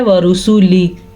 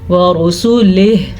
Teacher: جب وقف آ جائے تو ہا کو پڑھا ہی نہیں جاتا، یعنی کہ پڑھا جاتا ہے ورسولی، تو ہا کہاں گیا اس کو پڑھنا ضروری ہے، ہم اسے پڑھیں گے ورسولہ، ٹھیک ہے۔